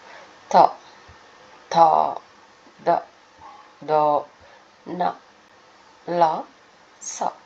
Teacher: ದಂತ್ಯ. ದಂತ್ಯ ಅಂದರೆ ಹಲ್ಲುಗಳ ಸಹಾಯದಿಂದ ಹುಟ್ಟುವ ಅಕ್ಷರಗಳು. ಥ ಥ ದ ದ ನ ಲ ಸ ಇವೆಲ್ಲ ಹಲ್ಲುಗಳ ಸಹಾಯವನ್ನು ಪಡ್ಕೊಳ್ತೇವೆ ಹುಟ್ಟುವಾಗ.